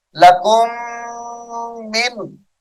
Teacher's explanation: یہاں پر ادغام شفوی ہوگا غنہ کر کے پڑھیں گے